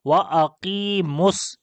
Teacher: پہلا ساکن جو ہے یہ واو مدہ ہے, تو اس کو ہم گرا دیں گے, اس کو نہیں پڑھیں گے. تو لہٰذا اس وجہ سے اس میم کو ڈائریکٹ آپ سواد کے ساتھ ملائیں گے تو پڑھیں گے وَأَقِیمُس.